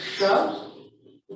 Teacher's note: the sh, is pronounced at the back of the throat